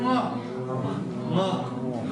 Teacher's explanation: у нас струя воздуха направляется в нос. И часть воздуха выходит у нас через нос.